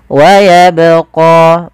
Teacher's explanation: Ini menandakan dia bacaan qalqalah, yang dimana huruf ba ini harus kita pantulkan.